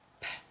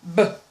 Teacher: Bilabial plosive sound, which are p as a voiceless and b as the voiced sound.